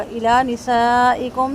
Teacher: سین پہ مد واضح متصل ہے، 4 حرکت مد کو لمبا کریں گے